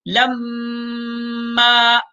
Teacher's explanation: میم کے اوپر تشدید ہے تو غنہ ہوگا